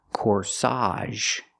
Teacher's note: Put the stress on the second syllable. Corsage. Again, the AGE makes the AHZH sound here.